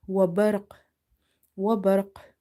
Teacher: Qaf is heavy as well as it's from the qalqalah eco-producing sound letters. So barq, barq, qalqalah will be strong because your word is ending with the qalqalah letter and letter itself is silent because we have to pause here.